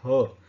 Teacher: याला म्हणतात महाप्राण. ह च्या उच्चाराच्या वेळेस खूप मोठी हवा ही आपल्या शरीरातून तोंडावाटे बाहेर सोडली जाते